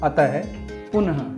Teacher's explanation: अह, जिसे विसर्ग कहा जाता है, जिसकी ध्वनि ह की तरह निकलती है